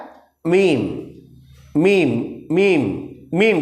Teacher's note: ठीक है उसके बाद देखिए दोनों होंठ के खुश्क हिस्सा जो सूखा हुआ हिस्सा है